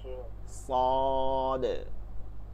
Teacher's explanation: সদটা তো আমরা অলরেডি পড়ছি, সিনের এখানটা, কিন্তু জিব্বাটা এইটা বেশি জায়গা লাগে দেখে জিব্বাটার একদম পুরাটা লাগে, এজন্য এটা মোটা হয়ে যায়।